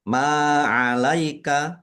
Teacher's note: mim fathah alif mad thobi'i panjang dua harakat